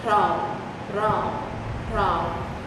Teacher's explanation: So as we consistently say the word Pram, Pram, Pram, that's how we're saying we're letting the tongue vibrate off of the top of our mouth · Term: rolling your R's